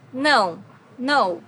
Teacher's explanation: no has a very unique sound in Portuguese because it's a nasal sound